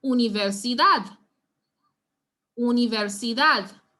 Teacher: we realize that emphasis will be placed on the dad. So you'll not stress anywhere else in the word.